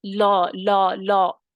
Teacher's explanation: جب لا پڑھ رہے ہیں تو لو نہیں پڑھنا، لو ہونٹوں کو گول کرتے ہوئے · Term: تفخیم